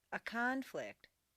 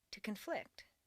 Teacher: change the stress from the first syllable for nouns to the second syllable for verbs. This is a regular, consistent change.